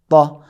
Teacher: حرف طا کو موٹا اور بھاری ادا کیا جاتا۔ تا آواز ادا کرتے وقت تھوڑی سی آواز گلے کی طرف بھی، جس طریقے سے کوئی بڑا آدمی بات کرتا ہے، کوئی آفیسر بات کرتا ہے تو کہتا ہے او اے، نہیں، اے باریک ہے۔